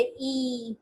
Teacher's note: आपकी जो जबान है ई नियरली क्लोज है, किसके किसके क्लोज है, आपके ऊपर वाले तालू के बहुत क्लोज है, ई। फिर उसका कौन सा पार्ट रेज हो रहा है, फ्रंट पार्ट रेज हो रहा है, और लिप्स कैसे हैं वो स्प्रेड है। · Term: ई लॉन्ग वॉवल